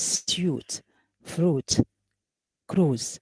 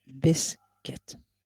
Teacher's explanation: So here we have the vowel oo, while in biscuit we don't have the vowel o. We have e